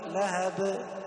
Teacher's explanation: الباء الأخيرة لهب قلقلنا قلقلة عادية لأنها ساكنة فقط وليست مشددة